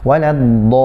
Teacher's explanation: Panjangkan 6 harokat, kemudian kasih tekanan ya pada lamnya. Dol, dinaberkan sedikit, ditekan sedikit, tidak berlebihan, tidak juga kurang. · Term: tasydid